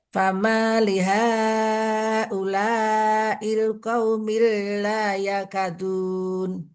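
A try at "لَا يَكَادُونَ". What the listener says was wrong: Qaumi la yakadu. La panjang, ka panjang.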